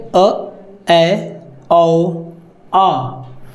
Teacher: अर्धविवृत स्वर, जिसमें मुंह आधा खुलता है